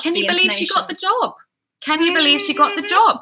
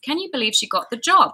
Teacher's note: Going up, we're surprised.